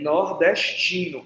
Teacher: é tipo um tzinho que é um espraiamento do S que vem antes, do S palatalizado chiado